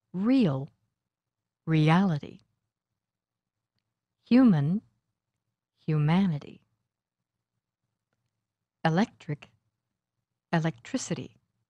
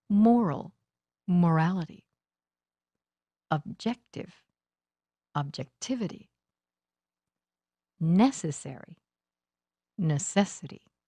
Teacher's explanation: The stress for these suffixes happens on the syllable just before this two-syllable suffix.